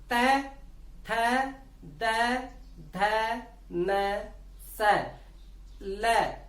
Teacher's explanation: तो लृ, तू का मतलब तय वर्ग, छोटा तू का मतलब तय वर्ग, ल और स, सीधा वाला स, जिसको हम सलेट वाला स, सपेरा वाला स, सवाल वाला स कहते हैं, इनका उच्चारण स्थान दंत से होता है।